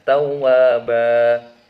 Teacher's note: Jadi bunyinya bukan bunyi asli dari fathah tain, melainkan dibaca panjang. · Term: mad iwad